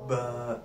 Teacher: होठों की अंदरूनी तरी के मिलने से बा अदा होता है सिंपली होठ बंद करें बा ऐसे सिंपली खोल लेना बा अदा होता है